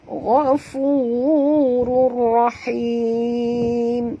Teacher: Kena masukkan bunyi tanwin ni terus ke dalam ra tanpa dengung. Idgham bila gunnah ya.